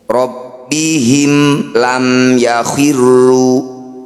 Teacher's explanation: Bunyi mim sukunnya dibaca dengan jelas, rapatkan bibir, tidak usah dengung. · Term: izhar syafawi